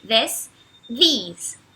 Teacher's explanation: aquele som do TH que é estranho para a língua portuguesa, que você acaba tendo que botar a língua entre os dentes